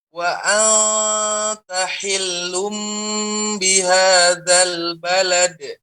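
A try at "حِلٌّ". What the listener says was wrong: Ya, pada kata hillum di sini cukup ditempelkan, jangan sampai ditekan. Hillum, nah ini ditekan. Hillum bihadzal balad.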